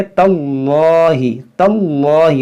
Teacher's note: जब मिलाकर पढ़ते हैं तो हमज़ा वसली गिर जाता है, तो इसको पढ़ेंगे तल्लाहि, तल्लाहि, लाम को मोटा करेंगे, नून मुशद्दद गुन्ना करेंगे। · इसमें जलालत से पहले ज़बर है, तो इसको हम मोटा पढ़ेंगे। इसमें जो ता के साथ जो अलिफ है, इस अलिफ को नहीं पढ़ेंगे हम।